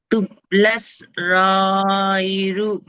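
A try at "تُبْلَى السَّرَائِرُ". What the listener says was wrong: సా వదిలేటు. తుబ్లస్ సా రాయిరు. తుబ్లస్. తుబ్లస్ సరాయిరు.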